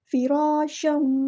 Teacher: فراشا، فا باریک ہوگا، را یہاں پہ پورا ادا کرنا ہے، ہیوی لیٹر الف مد آ گیا تو ایک الف کے برابر ہم لمبا کریں گے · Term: مد اصلی